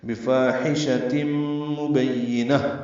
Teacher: بفاحشۃ مبینہ با کو یا سے ملائیں گے، یا کو جلدی ادا کریں گے، نون کو طائر مربوطہ سے ملا دیں گے، ہا ساکن ہو جائے گی وقفاً، یہ وقف بالابدال ہوگا. ہا تبدیل گول تا طائر مربوطہ ہے، ہا میں تبدیل ہو جائے گی.